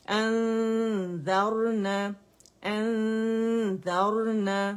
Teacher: نا باریک ہے، را موٹا ہے کیونکہ را سکون سے پہلے فتح آ رہی ہے